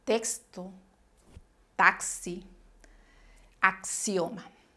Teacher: Bien, les decía en el vídeo anterior, cuando vimos la letra X, que esta tenía dos sonidos en la actualidad. El primero es un sonido doble, como si fuera una C, S